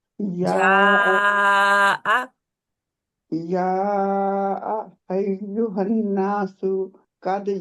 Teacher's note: पांच चार से पांच काउंट लंबा खींचे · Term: मद